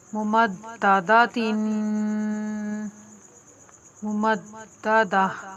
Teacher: गोल दायरा वक्त की अलामत है, इसके ऊपर हम वक्फ करेंगे। गोल ता जो आखिर में है, वक्फ की हालत में हाई साकिना से बदल कर इसको पढ़ेंगे।